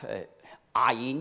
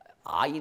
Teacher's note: ça prononce très bas dans la gorge